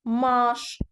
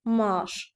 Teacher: Mən bu sözü maaş şəklində tələffüz eledyirəm. Yəni a-nın biri düşür, digəri uzun tələffüz olunur.